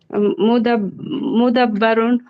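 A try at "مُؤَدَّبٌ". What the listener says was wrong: মুদাব্বর না, মুআদ্দাবুন পড়েছিলেন।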